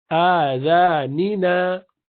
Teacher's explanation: So a and za and second na are same length, and ni is half of that.